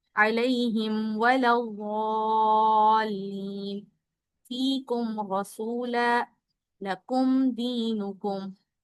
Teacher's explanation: मीम की आवाज बिल्कुल क्लियर आएगी, इसको नाक में नहीं छुपाया जाएगा। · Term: इजहार शफवी